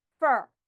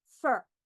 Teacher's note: There is a short vowel with an R, which influences the sound of my vowel. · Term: r-controlled syllable